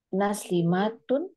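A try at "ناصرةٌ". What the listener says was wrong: Jadi di sini nasirotun. Nanya agak panjang.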